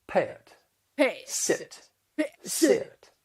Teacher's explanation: in the South, it's common to create diphthongs with the short vowel sounds